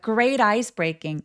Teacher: 자, great ice breaking. 연결해 보자면 모음 사이에 T가 있어서 great eyes. Great eyes라고 굴려서 발음해도 되고 혹은 great ice breaking 나눠서 빠르게 나눠서 바로 아이스로 넘어가 주시면 돼요.